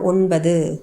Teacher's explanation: ஒன்பது அப்படிங்கறதுல து வந்து முழுமையா ஒலிக்காததுனால அது வந்து குற்றியல் உகரம் அதுக்கு முன்னாடி எழுத்து ப அப்படிங்கறது இப்பு கூட்டல் ஆ உயிர்மெய் எழுத்து அதனால உயிர்தொடர் குற்றியல் உகரம்.